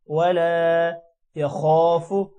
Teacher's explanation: خو موٹا ہوگا، الف کی وجہ سے لمبا بھی ہوگا. خو کے ساتھ جب الف ملے گا تو خو یا خو تھوڑا سا لمبا کریں گے.